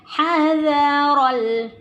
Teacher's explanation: ya ini ha tipis, zal tipis, ro-nya yang tebal. Jadi hati-hati jangan hadzara.